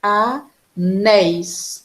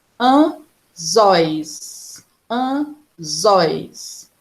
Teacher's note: Porque a sílaba forte é a última.